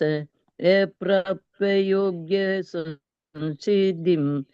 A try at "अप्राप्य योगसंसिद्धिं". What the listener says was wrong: अप्राप्य योग्य नहीं है, अप्राप्य योग संसिद्धि।